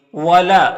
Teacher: یہاں پر الف سے پہلے لام کے اوپر زبر ہے تو الف مدہ ہوگا، اسے ایک الف کے برابر کھینچ کر پڑھیں گے۔